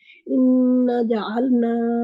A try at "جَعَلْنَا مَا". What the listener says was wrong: نہیں مد کریں اس کے اوپر. حروف مد ہے نا اس میں.